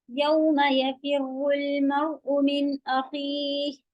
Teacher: یفر فی باریک، را ہیوی